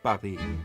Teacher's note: try to remove that puff of air and you'll get something closer to the French sound